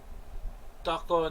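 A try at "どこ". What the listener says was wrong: Doko? You did. Or even I think you said Daka.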